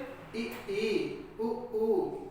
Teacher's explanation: ऐसा स्वर जिसको बोलते समय हमारा मुख द्वार सबसे कम खुलता है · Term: समृद्ध स्वर